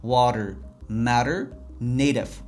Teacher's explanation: T'ni men qanaqa talaffuz qildim? Yumshoq D sifatida talaffuz qildim. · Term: flap T, flap T tovushi